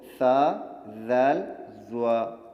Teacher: حروف لثویہ کا مخرج دیکھیے، زبان کی نوک جب اوپر سامنے والے دو دانتوں جن کو ثنایا علیہ بھی کہا جاتا ہے ان کے سرے سے لگے تو اس سے ثا ذال ضا ادا ہوتے ہیں